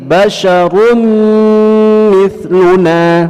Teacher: tanwin berjumpa dengan mim idgham bi gunnah, dua harakat, ditahan dua harakat dengan dengung di dalam khasyum kita